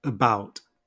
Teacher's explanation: the first syllable with a schah is unstressed and the second syllable is stressed